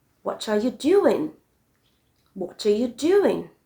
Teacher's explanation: take note of how my voice falls on the last stressed syllables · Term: falling intonation